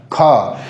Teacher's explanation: ख को जब उच्चारित करें उसमें भी वाइब्रेशन यानी कंपन कम होता है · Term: अघोष